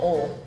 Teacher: the deeper south you go, they'll drop the I and make it one syllable